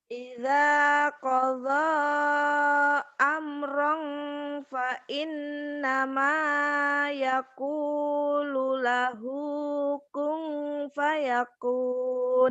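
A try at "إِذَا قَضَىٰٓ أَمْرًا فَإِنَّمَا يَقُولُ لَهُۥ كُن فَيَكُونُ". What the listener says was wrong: Di ihfanya masih ong semua. Padahal ihfa tuh nanti ada bagi tiga ya. Ada yang abad, yang banget, ada ausat, pertengahan, ada yang sedikit. Ida, ida, kodo.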